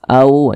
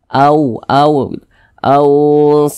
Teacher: huruf wau sukunnya ini adalah huruf Lin au jadi dibaca lunak saja